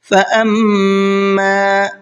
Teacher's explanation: یہاں میم کے اوپر تشدید ہے، یہاں بھی تھوڑا سا غنہ کریں گے